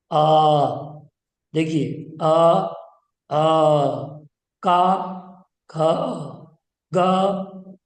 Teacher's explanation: आ का वर्ग और हा तथा विसर्ग, इनका उच्चारण स्थान कंठ है